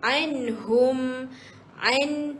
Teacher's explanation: Ada nun, ada ya. Kemudian anhum an kena senyumlah sebab dua-duanya huruf tipis